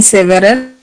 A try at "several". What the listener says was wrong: Several. Say several. Yes, several. We don't pronounce this E here. Several. Several.